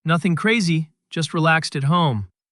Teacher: Notice how your voice naturally drops at the end of the phrase. Yes, that falling intonation shows you are relaxed and confident in what you are saying.